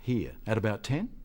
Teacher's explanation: he says at about 10 as a question